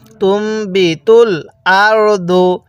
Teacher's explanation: তাহলে এখানে তাকে মিমের সাথে লাগাবো, তা মিম পেশ তুম, অবশ্যই গুনাহ করতে হবে কারণ মিম সাকিনের পরে বা থাকলে গুনাহ করে পড়তে হয়।